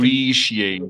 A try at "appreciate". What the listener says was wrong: Yeah, you have to separate those two syllables by adding extra sound, not eliminating it.